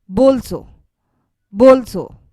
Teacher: the stress is placed on the second to last part of the word